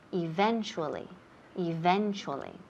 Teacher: the middle of the word it sounds like cha eventually eventually now in this word the accent is on the second syllable